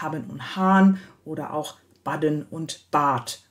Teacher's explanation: wir haben ein Nebeneinander von haben und hahn oder auch baden und bad. Da haben wir eben auch eine Dehnung des Vokals.